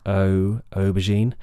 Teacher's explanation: Make sure you're sliding that vowel from relaxed lips, to rounded lips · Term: goat vowel